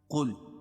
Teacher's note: قاف کو موٹا پڑھیں گے کیونکہ حروف مستعلیہ میں سے